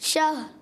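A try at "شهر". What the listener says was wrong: شہر. را کی آواز بھی آئے. شہر. شہر.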